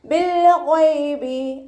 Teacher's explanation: ബിൽ ഗൈബി ലാം കൽക്കലയുടെ ലെറ്ററില്ലാത്തത് കൊണ്ട് half സുക്കൂന് കൊടുക്കുക. ഗൈന് ഇസ്തിഅലാൻ്റെ ലെറ്ററാണ്, തഫീം ചെയ്യുക. ഉയർത്തിച്ചരിക്കേണ്ട 7 അക്ഷരങ്ങളിൽ പെട്ടതാണ് ഗൈന്.